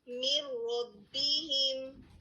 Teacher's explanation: را نے اوور کم کر لیا ہے نون کی آواز کو, اور نون کی آواز نے اپنی شناخت کھو دی ہے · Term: ادغام کامل